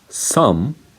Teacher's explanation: this one is a bilabial nasal sound. So you stop the flow of air using your lips. So your lips should be closed when you pronounce the M sound.